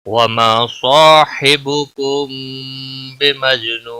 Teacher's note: الف مدہ ہے ایک الف کے برابر کھینچ کر پڑھیں گے، صاد اور الف دونوں کو پر پڑھا جائے گا ، صاد حروف مستعلیہ میں سے ہے اس لیے پر پڑھا · حبکم میم ساکن کے بعد با آیا ہے، یہاں پر اخفاء شفوی ہوگا، گنہ کے ساتھ پڑھیں گے ، مج جیم ساکن پر کلکلا ہوگا، نو واو مدہ ہے